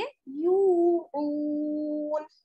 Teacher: अगर हम आयत पर ठहरेंगे तो क्या पढ़ेंगे يعلمون, यानी नून को हम साकिन कर देंगे